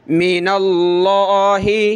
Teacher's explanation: لفظ اللہ سے پہلے زبر ہے اور آپ پھر اس کو من اللہ، پتلا نہیں پڑھ سکتے، بڑا موٹا کر کے پڑھیں گے